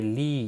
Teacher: لی یا مدہ ہے، 1 الف کے برابر کھینچ کر پڑھیں گے۔